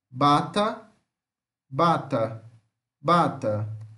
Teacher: B é uma oclusiva bilabial sonora